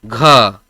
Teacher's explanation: खुद से घ बोलिएगा ना तो ज्यादा हवा निकलेगा मुंह से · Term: महाप्राण